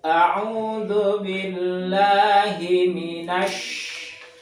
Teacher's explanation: ketika mengucapkan shin, ini ada angin di mulut ini, mulutnya dipenuhi angin. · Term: tapasyi